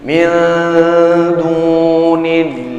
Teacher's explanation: Wa ma lakum min, nun mati bertemu dengan huruf ta pada makhraj yang sama. Ketika dia tersentuh dengan hukum ikhfa, ikhfa-nya ikhfa yang akrab, maka tetap midu. Prosesnya ditahan sejenak 2 sampai 3 ketukan ya.